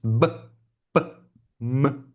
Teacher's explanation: So we have sounds that are bilabial.